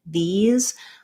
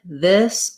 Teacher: the E, like these, is very high and tense. And then the I, your tongue is a little lower and it's more lax.